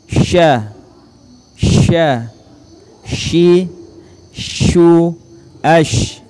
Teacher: huruf sya mempunyai sifat at-tafashi, yaitu menyebarnya udara di dalam rongga mulut. · huruf sya menyentuhkan tengah-tengah lidah kita di langit-langit